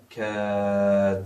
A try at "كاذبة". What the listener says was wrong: Yes, but you don't have to stretch the the. The long vowel is for kaf.